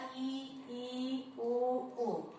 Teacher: तो इसमें हमारा मुख पूरा बंद हो जाता है, एकदम क्लोज लगता है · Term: समवृत्त वर्ण